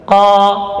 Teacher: Langit-langit, ya, tasa'udus sauti ilal hanakil a'la, terangkatnya suara ke langit-langit atas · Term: huruf yang tebal